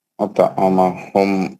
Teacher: टोय का खलखले सुगरा होगा, हल्का खलखला करेंगे।